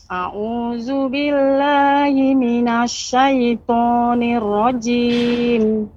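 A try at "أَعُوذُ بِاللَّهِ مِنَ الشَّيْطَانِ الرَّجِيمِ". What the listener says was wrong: Nirrajim. Lebih ditekan, Bu.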